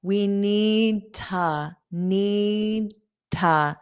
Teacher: We need to replace the washer and dryer. So notice this two can become a very unstressed ta.